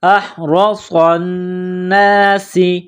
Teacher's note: صاد میں سیٹی کی آواز پیدا کرنی ہے، صاد کو موٹا کرنا ہے ، صاد کو نون کے ساتھ ملانا ہے، نون مشدد ہے، · صاد کو نون کے ساتھ ملانا ہے، نون مشدد ہے، غنہ کریں گے